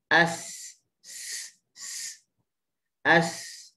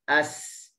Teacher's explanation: Dia campur suara, dia campur angin dan dia campur desiran. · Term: safir